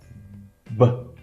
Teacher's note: Para eu formar o som eu tenho que bloquear o ar e depois explodir ele, soltar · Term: stop consonants